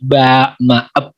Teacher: yang pertama itu ada namanya asyaftaniyah, dari 2 bibir atau bahasa istilahnya bilabial